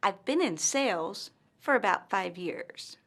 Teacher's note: pauses after the word sales and five years